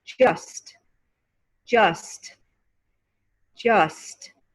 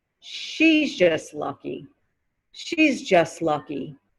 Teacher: the t disappears in the american accent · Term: vanishing t sound, vanishing T